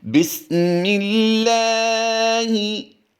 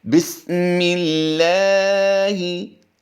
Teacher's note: हमने लाम को पुर नहीं किया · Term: बारीक